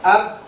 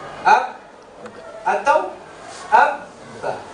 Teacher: Jadi di situ kita tahu bahwa makhrajnya dua bibir. Asy-syafatain.